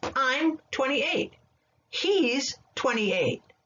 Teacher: you can shorten i am 28 years old to i'm 28. we drop the first vowel in the contractions